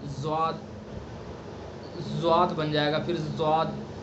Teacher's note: अगर जो ज़बान की नोक के किनारे सना सुबला पर लग जाएंगे तो फिर इसके अंदर जा की आवाज़ आ जाएगी